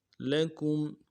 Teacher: میم ساکن میں یہاں پہ غنہ نہیں کریں گے. لکم، پورا غنہ نہیں کریں گے.